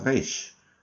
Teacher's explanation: es una letra un poco más gutural que nuestra R y viene a ser como una R afrancesada, como si hicieran gárgaras